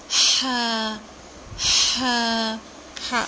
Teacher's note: درمیان والے حصے سے ہا ادا ہوتا ہے، جیسے ہوا باہر نکلتی ہے، سانس باہر نکلتی ہے، ایسے ہا ہا ہا ادا ہوتا ہے۔